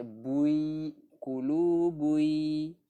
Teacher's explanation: tanwin bertemu ya, idgham bi gunnah. Memasukkan berserta dengung.